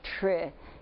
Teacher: you don't really hear t, r, I. You hear tr. And in fact, it sounds like what? Sounds like a CH. And that's what, if people are having trouble, that's what they spell it a lot, CH.